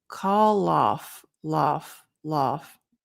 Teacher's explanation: So here we have the L that connects to the O.